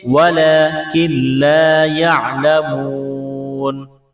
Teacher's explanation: اس نون کو نہیں پڑھیں گے، نون کا لام میں ادغام کریں گے